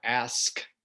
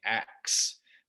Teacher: ask became ax. They just sort of reversed those two sounds.